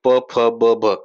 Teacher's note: ज्यावेळेस तुम्ही प फ ब चा उच्चार करता त्यावेळेस तुमचे ओट एकमेकाला जुळलेले तुम्हाला दिसून येतील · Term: ओष्ट, ओष्ठ